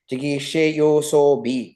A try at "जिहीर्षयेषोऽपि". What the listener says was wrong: No, you're saying yo. Jihirsha-ye-shopi. Jihirsha-ye-shopi.